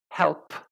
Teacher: if I say help you should feel the puff of air p is aspirated quite strongly and to produce the sound correctly